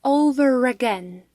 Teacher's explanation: Also, did you notice I said over again, using the r sound in between the words over and again, although in British pronunciation we should say over without the r sound.